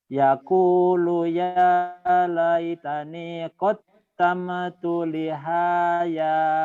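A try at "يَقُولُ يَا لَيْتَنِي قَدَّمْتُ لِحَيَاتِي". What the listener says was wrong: Lihaya, yang panjangnya ya. Lihayati. Ulang.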